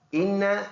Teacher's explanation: یہ نون مشدد ہے تو ناک میں آواز دے کے جائیں گے. ایک الف کے اندازے سے ہم اس میں غنہ کریں گے.